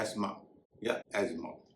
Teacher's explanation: इसे आमतौर पर लोग अस्थमा कहते हैं, लेकिन इस शब्द में टीएच का उच्चारण नहीं होता, इसे कहेंगे एस्मा या एज्मा।